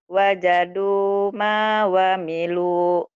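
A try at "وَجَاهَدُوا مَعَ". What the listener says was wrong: Ya, coba lihat lagi. Coba lagi. Baca lagi. Baca lagi. Ada wa-nya enggak di sini? Enggak ada lagi.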